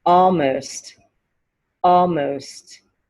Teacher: you definitely hear the t at the end of almost